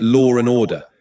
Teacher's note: To make the transition smoother and avoid a glottle stop or a break between the words, an R sound is inserted, making it lore and order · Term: intrusive R